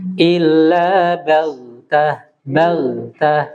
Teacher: Huruf ghain dia suaranya itu mengalir, rokhawah ya.